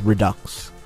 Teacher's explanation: Sounds like ducks, accent on the second syllable.